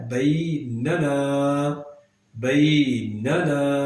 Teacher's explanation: پہلے نون کو ہم نے لمبا نہیں کرنا، جبکہ دوسرے نون کو لمبا کریں گے۔ اب پہلے کو اس لیے ہم لمبا نہیں کریں گے کہ وہاں پر جسٹ زبر ہے، صرف زبر ہے، اگلے نون پر بھی زبر ہے، لیکن اس کے فوراً بعد، نون کے فوراً بعد جو ہے وہ الف ہے، اس لیے اس کو ہم نے لمبا کرنا ہے بیننا۔